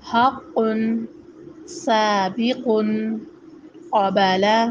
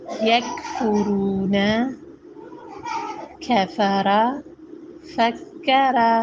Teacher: قاف قوے کو لگتا ہے اور کیف کا حصہ تالو کے حصے کو لگتا ہے، ٹھیک ہے۔ قاف موٹا پڑھا جاتا ہے، جھٹکے کے ساتھ پڑھا جاتا ہے، جبکہ کیف کی آواز باریک و بغیر جھٹکے والی ہوتی ہے